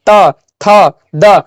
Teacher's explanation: अब देखिए ट के बोलिए ट, तो देखिए जीभिया टेढ़ा होकर जाके सटता है ट, तो आपका जब जीभ जो है टेढ़ा होकर जाके सटेगा, तो वो कहां पे जा रहा है, आपको कहां पे स्पर्श कर रहा है, तो मूर्धा पे स्पर्श कर रहा है। अब देखिए जैसे ही बोलिएगा त, तो जीभ जाके दंतिया में सटता है